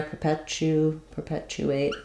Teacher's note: A little bit of a ch sound there, perpetuate. And then unstressed at the beginning.